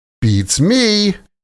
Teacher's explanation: The stress is on me. And there's an extra kind of syllable there, right?